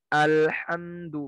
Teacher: berhati-hatilah jangan sampai menebalkan huruf hamzah seperti pada kata al-hamdu